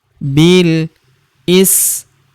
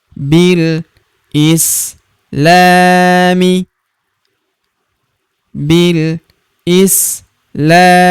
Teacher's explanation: Bil huruf bi langsung lompat masuk ke huruf lam yang berharakat sukun. Di sini alifnya tidak dibaca atau dianggap tidak ada.